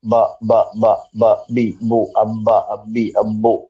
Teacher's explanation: ബാ ക്ക് നിങ്ങൾ മൂക്ക് പൊത്തി വെച്ചാലും ബ പറയാൻ പറ്റും